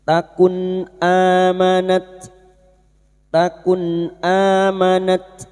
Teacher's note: Idhar halqi. Nun sukun dibaca jelas tanpa mendengung. · Hamzah yang berharakat alif kecil di atas mad badal. Dua harakat kita panjangkan.